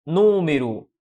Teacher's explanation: Qual é a mais forte? É a última? Não. Se não é a última, não é oxítona. É a penúltima? Não. Se não é a penúltima, não é paroxítona. Ela é a antepenúltima sílaba. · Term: proparoxítona